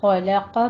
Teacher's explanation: خا اور قوف کو پر پڑھنا ہے، لام بیچ میں باریک رکھنا ہے